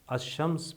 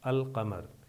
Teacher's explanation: جب شمس کے پہلے ال لگایا جاتا ہے تو لام کی آواز ظاہر نہیں کی جاتی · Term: حروف شمسی